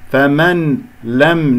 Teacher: ناكل النون لأنه يدغم بغير غنة عند اللام